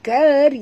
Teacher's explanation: Kerana mim, ya, makhrajnya di bibir. Tutup mulut. Bukan sengih, eh, tutup mulut.